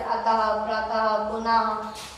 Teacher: जो विसर्ग होता है इसका उच्चारण लगभग हा के समान होता है